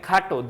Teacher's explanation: ট এর সাথে অ আছে এই অকারটা পরবর্তীতে উচ্চারণের সময় ও কার হয়ে যাবে উচ্চারণটা ও হয়ে যাবে